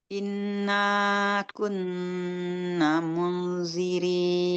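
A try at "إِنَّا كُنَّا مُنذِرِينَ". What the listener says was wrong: Nanya panjang, 2 harakat. Inna kunna munzirin, 2 harakat.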